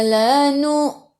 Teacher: Hamzah ada sukun, baca dengan putus.